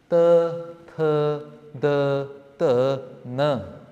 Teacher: The ta varg is all with your tongue between your two teeth.